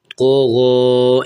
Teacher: قو زبر تو، غین کھڑا زبر غو، قو غو، یہاں قو بھی موٹا کر کے پڑھنا ہے اور غین کو بھی پر کرنا ہے